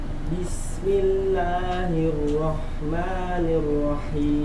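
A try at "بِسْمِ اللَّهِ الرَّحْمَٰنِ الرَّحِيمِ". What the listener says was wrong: Haknya tidak ditebalkan ya. Ya roh, sering yang terjadi itu ditebalkan. Bismillahirrahmanirrahim. Tebal. Ya roh, tipis ya. Hak. Bismillahirrahmanirrahim.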